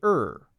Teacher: americans for example we use the r sound we tend to use the r sound slightly more or at least stronger than in the uk